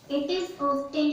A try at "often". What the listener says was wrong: It is often, it's not often. It is often. T is silent.